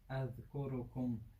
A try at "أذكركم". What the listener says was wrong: أذكركم. You're making qalqala in the letter ra. There is no qalqala in the letter ra. أذكركم.